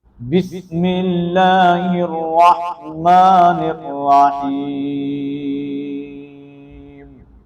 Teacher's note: اب بسم اللہ کے اندر لفظ اللہ کا نام جو ہے نا وہ بریک ہوگا میم کے کسرے کی وجہ سے، اور لفظ جو را ہے اس کو ہم پر پڑھیں گے کیونکہ را مشدد کے اوپر زبر آ گئی ہے